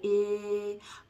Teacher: your tongue is still in the front and it's high, I, but it's a little bit looser and it's not so tense.